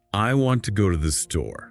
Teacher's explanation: A native speaker does not pronounce every single word with equal phonetic weight. They stress the core information want, go and store. · They stress the core information: want, go, and store. So the rhythm becomes, I want to go to the store. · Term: stress timing